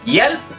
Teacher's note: En estas dos combinaciones, HJ y HV, la H es muda, no se pronuncia.